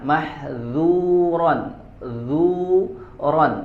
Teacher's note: karena huruf zal itu tipis dibacanya, ya, tidak tebal · sifat infitah yaitu sifat tipis ya pada kata mahdzuron yaitu pada huruf dalalnya ya pada huruf dalal ya mahdzuron dzuron